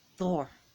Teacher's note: It's a short rolled R